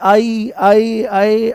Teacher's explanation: अ का उच्चारण कंठ से होता है कंठ से और इ का उच्चारण उससे ऊपर आकर के तालु से होता है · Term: कंठ तालव्य